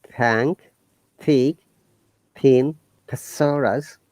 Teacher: Notice that when you're pronouncing thank, thick, thin, thesaurus, our tongue is touching our tooth. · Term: voiceless sounds